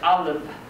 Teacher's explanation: The stress is on ah. Yeah. So we don't pay as much attention to the unstressed syllable.